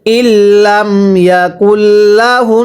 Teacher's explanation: নুনে যদি তাসদীদ হয় গুনাহ করা ওয়াজিব হয়।